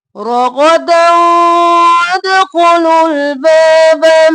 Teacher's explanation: اور دونوں کو جلدی سے حرکات ہے، رغدا ادغام مع الغنہ، دال کو واو میں مدغم کیا غنہ کرتے ہوئے ، رغدا وادخلوا الباب، الف خالی ہے اس کو نہیں پڑھیں